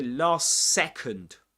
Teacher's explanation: So we drop the final T, the letter C, or the consonant sound T at the end of last, and we say last second. We pronounce only one S, a long S sound.